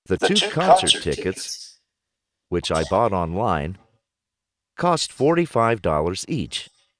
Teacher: Note the pause in speech and the rising and falling intonation.